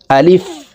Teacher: এই আলিফ উচ্চারণ মুখের খোলা জায়গা থেকে উচ্চারণ হবে।